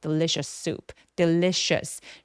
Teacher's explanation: delicious 할 때 강세가 부각되게 느껴지려면 첫 번째 음절인 부분을 조금 힘 빼고 소리 내 주시면 되겠습니다.